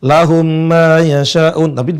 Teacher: dengan jadi bertasydid atau idgham jadi ini salah satu contoh dibaca dibacanya dengan melebur jadi mim yang satu kemudian ditahan dua harokat · mim yang pertama melebur jadi mim yang kedua jadi bertasydid dia nggak dibaca lahum mayasa Bukan tapi melebur dengan jadi bertasydid